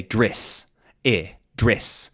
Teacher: instead of saying an eh sound, like in dress, they might say driss